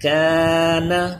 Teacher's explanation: الف سے پہلے یہ کاف باریک پڑھا جانے والا حرف ہے، اس لیے یہ الف بھی باریک ہو گیا، اس کی آواز بھی باریک